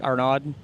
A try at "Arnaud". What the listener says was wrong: The D is silent this time.